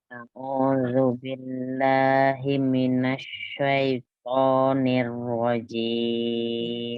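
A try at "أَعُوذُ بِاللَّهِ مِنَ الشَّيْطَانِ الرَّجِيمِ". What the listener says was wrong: Tidak himinas ya, tidak tasdid di mimnya. Himinas.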